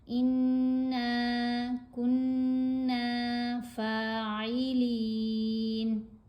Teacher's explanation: نون کے اوپر زبر ہے، ساتھ الف ہے، اس لیے الف حرف مدہ ہے تو نون کی آواز کو لمبا بھی کیا جائے گا۔ انا کننا فاعلین، آیت مکمل ہوگی، نون کو ساکن کریں گے۔